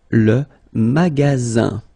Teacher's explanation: only one S between two vowels. Then you get the sound Z, alright? And then the ending here is IN, so it's nasal, it goes in your nose, and it's un.